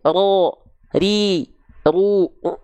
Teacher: huruf ro ini takririnil dia bergetar tapi hanya sedikit saja mungkin hanya satu sampai dua getaran saja